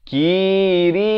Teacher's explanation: Kiri, ri jadi nipis, dibacakan dengan dua harakat.